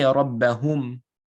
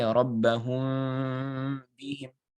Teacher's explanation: So you have to hold it, right? You're gonna do ghanna and you're gonna put a small gap between your lips. So you won't say rabbahum. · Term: ikhfa al-shafawi